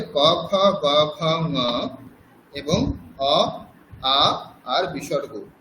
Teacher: ক বর্গ এবং অ, আ বিসর্গ এর উচ্চারণ স্থান হচ্ছে কণ্ঠ